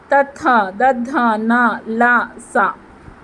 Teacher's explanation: దంతాల సహాయంతో పలుకబడే అక్షరాలు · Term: దంత్యాలు